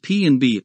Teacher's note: the bilabials p and B are produced by pressing the two lips together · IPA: /p/, /b/